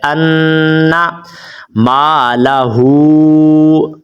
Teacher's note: یہ نون کے اوپر مشدد ہے تو اس پر آپ نے ہمیشہ غنہ کرنا ہوتا ہے